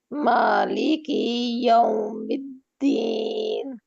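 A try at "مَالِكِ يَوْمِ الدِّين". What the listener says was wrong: اچھا کی کو لمبا نہیں کرنا نا؟ نہیں، کی اور یا کو ملا دیں گے نا. اچھا دیکھیں کی یو کہیں آپ گیپ آ رہا ہے نا، تو پھر آپ لمبا کر رہی ہیں.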